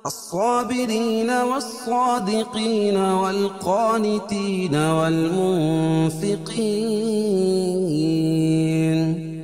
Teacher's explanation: صاد تو پر پڑھیں گے، کیوں؟ صاد حروف مستعلیہ میں سے